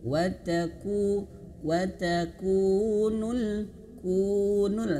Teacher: dan ingat ku ini panjang dua harokat itu satu ayun. Wa takunul, kunul satu ayun satu alif saja.